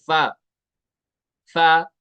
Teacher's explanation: ऊपर वाला दांत लगाएंगे निचले होंठ के साथ